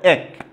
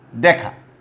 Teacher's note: এই যে এইটার উচ্চারণ হচ্ছে এক, একটু বিবৃত উচ্চারণ হবে। তারপরে দেখা, তুমি দেখো দেখা।